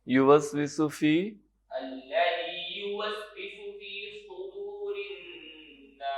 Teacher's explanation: صاد کو تھوڑا سا اور پر کریں